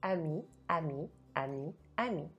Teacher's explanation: if e is at the end of the word, I don't pronounce it.